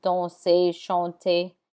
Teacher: The ER has an A sound like AY, danser, chanter.